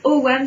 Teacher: On va dire OAM ou OWAM si vous avez envie de le prononcer à l'écossaise en faisant une petite liaison de diphtongue entre le O et le A pour éviter le hiatus